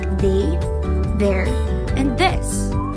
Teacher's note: In English, TH also makes a buzz sound